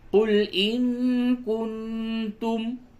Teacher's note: نون ساکن کے بعد کاف ہے، اخفا ہوگا، اور نون ساکن کے بعد تا ہے، یہاں بھی اخفا ہوگا۔